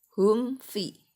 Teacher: Karena mim sukun ketemu fa ini mim sukunnya itu dibacanya lebih jelas, bunyinya itu berasa lebih jelas, maka ini dikenal idhar safawi syiddah. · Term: idhar syafawi